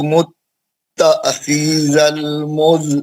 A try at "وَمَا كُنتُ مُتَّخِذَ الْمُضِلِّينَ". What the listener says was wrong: नहीं गलत हो गया लाम को सख्ती से पढ़ना है मुत्तखिज़ल मुज़िल्लीना मुज़िल्लीना